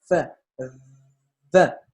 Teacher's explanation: Lábio dental, como o nome já diz, né? É um trabalho do lábio com os dentes